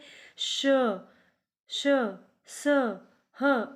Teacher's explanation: इसमें थोड़ा वायु के साथ हमारी रगड़ लगती है और गर्म वायु उत्पन्न होती है, इसलिए इनको ऊष्म व्यंजन कहते हैं।